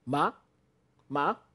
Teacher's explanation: This ma starts from a low pitch and rises fast and short. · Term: rising tone